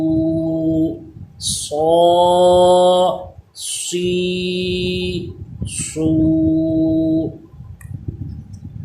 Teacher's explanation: صاد پہ بھی سیٹی پیدا ہوگی، زبان دانتوں سے پیچھے رہے گی، لیکن اس کی آواز پر ہونی چاہیے، موٹی آواز ہوگی۔ سین پہ سیٹی پیدا تھی لیکن باریک تھا، اور صاد حروف مستعلیہ ہے، اس کی آواز پر رہے گی۔